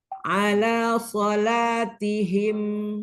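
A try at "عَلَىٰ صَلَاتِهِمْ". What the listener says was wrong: Harusnya seperti ini aja. Jadi enggak yang ala sola gitu. Sola kayak ada ayunan ya. Nah, itu di situ takaluf dia. Jadi jangan diayun-ayun.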